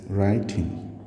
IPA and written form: ˈraɪ.tɪŋ (writing)